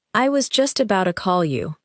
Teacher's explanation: Now, naturally, I was just about to call you. In relaxed speech, about to may sound like about a.